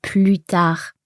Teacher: It's because here we've got the expression plus tard, and in there we never pronounce the S.